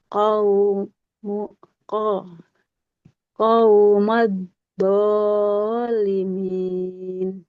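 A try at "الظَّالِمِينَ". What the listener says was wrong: Bukan do, huruf wo. Coba Ibu. Wo. Nah,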